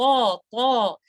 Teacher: آپ نے طا کے کیس میں بیک آف دا ٹنگ کو اپ رکھنا ہے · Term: ہیوی لیٹر